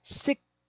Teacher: 6 is that KS sound, so it finishes with an S. Six. And then I have to slide my tongue down from that S sound.